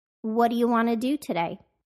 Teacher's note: what do you became whaddya, and want to became wanna